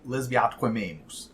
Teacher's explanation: there's a double elision in line 1, where the final vowel of lesbia merges with the initial vowel in atque, and then the same thing happens right afterwards with atque and amemus.